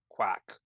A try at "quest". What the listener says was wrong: Quest. There's an S and a T at the end.